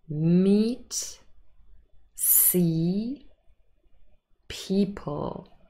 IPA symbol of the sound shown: i: